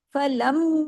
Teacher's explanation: फलम, अब इधर माँ की आवाज है, इसमें पहले गुन्ना भी करना है और साथ में अलिफ के दो हरकत के बराबर अलिफ मद्दा को खींचना भी है। फलम, ये गुन्ना हो गया, और फिर माँ दो हरकत खींचा।